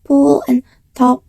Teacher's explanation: pool and top are pronounced with aspiration